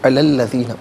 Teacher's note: علا انفرادی طور پر پڑھیں گے تو لام پر کھڑا زبر ہوگا علا، اور ملا کر پڑھیں گے تو لام پر زبر ہوگا. اسے الذین کے لام کے ساتھ ملائیں گے، درمیان میں سے الف یعنی حمزہ کو حذف کیا جائے گا.